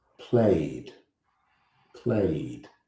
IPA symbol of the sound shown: d